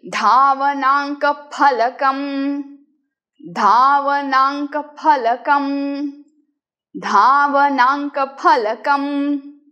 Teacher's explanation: in Sanskrit we are not going to say it as F A F. We will be saying P H A P.